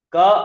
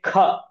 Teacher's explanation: ಕ ಅಂದಾಗ ಸ್ವಲ್ಪ ಕಮ್ಮಿ ಉಸಿರು less breath we require when we say ಖ ವಿ ರಿಕ್ವೈರ್ ಮೋರ್ ಬ್ರೆತ್